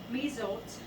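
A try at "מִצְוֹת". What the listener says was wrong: The word would actually be pronounced meets oat, not mizot. Meets oat, because you gotta see the shawal cuts that sound, so it's a 2-syllable word.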